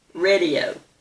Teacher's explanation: that first vowel is a short E instead of a long A. It's radio, not radio.